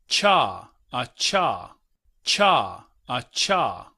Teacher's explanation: En ese sentido, debemos estar conscientes que la CH en realidad es un africado, o sea, no está en la lista de arriba, está en esta de baja abajo. La ch es como una combinación entre t y sh.